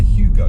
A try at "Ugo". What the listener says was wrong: Ugo, there you go. So it's an Uber. It's a bit like calling an Uber. It's the silent H.